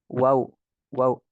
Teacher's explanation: ketika kita mengucapkan huruf wow, itu di asyafatain kerasa kita mengucapkan, dan di rongga mulut juga kita merasakan